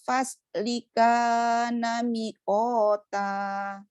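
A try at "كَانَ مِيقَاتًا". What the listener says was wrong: Mi-nya panjang. Nah, jangan cepat-cepat seperti itu bacanya. Nah, begitu baca yang tenang.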